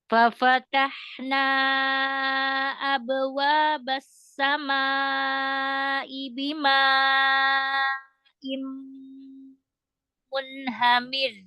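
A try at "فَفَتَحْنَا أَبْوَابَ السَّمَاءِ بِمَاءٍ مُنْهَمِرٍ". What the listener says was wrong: Masya Allah. Bagus ya.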